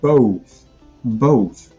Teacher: as English speakers do both in American English and in British English there's an extra rounding that happens